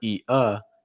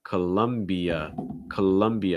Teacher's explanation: the e uh so it's not e uh it's colombia columbia it's like adding like a y sound like between the i and the a